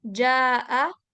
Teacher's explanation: Jaa tadinya ja dua harakat aja tapi ada hamzah nih. Jadi empat harakat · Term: mad wajib muttasil